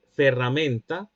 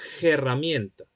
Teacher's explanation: Entonces, por ejemplo, de ferramenta, en el castellano medieval se habría dicho algo así como herramienta, es decir, con un fricativo glotal sordo al comienzo de la palabra · En los inicios del castellano, el fricativo labiodental sordo latino en posición inicial se transformó en un elemento aspirado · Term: aspiración